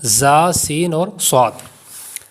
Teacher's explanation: یہ سمجھایا گیا تھا کہ 3 حروف ہیں جو حروف صفیریہ کہلاتے ہیں، یعنی سیٹی والے حروف۔ تو ان کو پڑھتے وقت سیٹی کی طرح آواز نکلے گی، جیسا کہ زا سین اور صاد۔